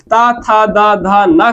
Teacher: त थ द ध न का उच्चारण स्थान दंत है